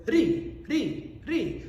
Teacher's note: ri, ri, ri is something where your tongue hits the back of your two front teeth